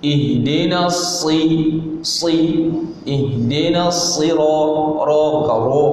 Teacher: Huruf yang isti'la bunyinya tebal, tetapi kerana dia baris kasrah, maka dia tidak ada muncung. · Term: huruf isti'la